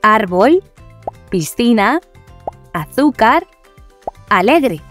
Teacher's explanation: Las palabras llanas son aquellas que tienen la sílaba tónica en la penúltima posición y por lo tanto el as que el acento, es decir, la fuerza que se le da a la voz, recae sobre esa penúltima sílaba.